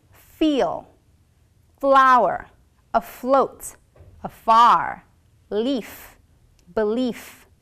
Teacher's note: put your upper teeth on your bottom lips and blow air your vocal folds will not vibrate for example feel flower a float a far leaf belief the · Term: labial Dental sound, labiodental